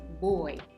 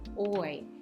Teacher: الديفثونج اللي هي صوتين متحركين مع بعض زي كلمة boy، الصوت بتاعها oy. ده عبارة عن صوتين متحركين مش صوت واحد